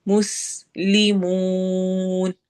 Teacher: मुस में सीन में सिटी की आवाज आएगी और मद आरिद लिल सुकून है।